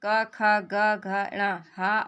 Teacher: जिन वर्णों का उच्चारण कंठ गला से होता है उन्हें कंठ वर्ण कहते हैं।